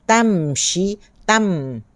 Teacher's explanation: tam, tutup bibir. Tamshi, jangan tanshi. Kalau tanshi tu nun.